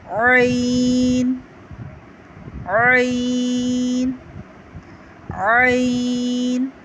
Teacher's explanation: حلق کے اندر سے اس کی آواز آتی ہے.